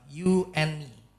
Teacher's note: Huruf D-nya hilang. Jadi cuman you and me.